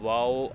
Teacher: होठों की शेप गोल करनी है तो वाओ अदा होगा